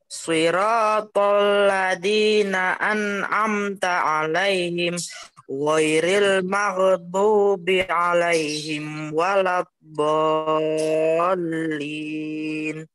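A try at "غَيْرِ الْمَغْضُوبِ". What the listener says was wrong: Nah, niki jenengan niku mohon maaf ghairil maghwainnya seperti Bapak Salim tadi, jadi ghain bukan huruf qalqalah, jadi tidak boleh dipantulkan. Ghairil maghdubi.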